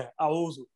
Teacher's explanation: ایک تو جب ہم نے تعوذ پڑھا ہے اعوذ، تو حمزہ کو لمبا نہیں کرنا